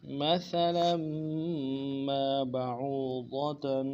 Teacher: لام کی تنوین کو آگے میم کے ساتھ ملانا ہے